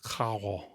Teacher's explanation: More like a French R rather than a traditional Spanish trilled R · in some Caribbean varieties of Spanish, it might sound more aspirated